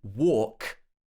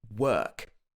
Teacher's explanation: the first one has the or sound and the second one has the er sound very long single vowel sounds